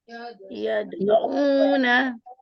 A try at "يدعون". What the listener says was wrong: دال کے اوپر قلقلہ کیجئے. عین کی ادائیگی کو درست کرتے ہوئے اس پہ واو مدہ کیجئے. یدعون.